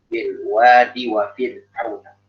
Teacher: Jadi bilwadinya dalnya nggak dipanjangkan dengan ya